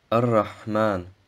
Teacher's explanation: Das H sollte aus dem mittleren Kehlkopf ausgesprochen werden.